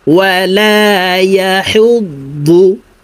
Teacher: দদ হরফকে মোটাভাবে উচ্চারণ করতে হবে।